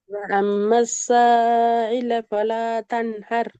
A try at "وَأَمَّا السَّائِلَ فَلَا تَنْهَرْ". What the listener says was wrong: இப்பயும் ஈட உச்சரிப்பு முன்னுக்கு வரல, தொண்டைக்குள்ள தான் வருது. இந்த சாவை எத்தனை செகண்ட் நீட்டணும்? அது சரி. அப்ப அடுத்த பிரச்சனை மத்தியம் ஒழுங்கா படிக்கல. சா- சாக்கு மேல என்ன அடையாளம் இருக்குது?